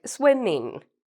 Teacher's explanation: anytime you hear like ing words like swimming you use your nose as well